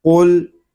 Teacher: یہ قاف جو ہے یہ زبان کی جڑ اور تالو کے نرم حصے سے ادا ہوگا